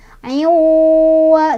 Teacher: Cara bacanya idgham, idgham itu artinya dimasukkan, jadi tanwinnya masukkan ke huruf wawu sambil berdengung. Jadi selain dimasukkan, selain ayuwa gitu, juga sambil ditahan ayuwa gitu, ayuwa-nya ditahan dulu ayuwa gitu. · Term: idgham bi gunnah